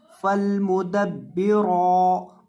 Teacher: رو کو آپ نے ایک الف کے مقدار لمبا کر کے پڑھنا ہے اور اس کو موٹا بھی کرنا ہے